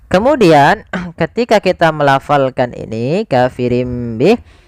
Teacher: Iqlab itu mengganti suara nun menjadi suara mim.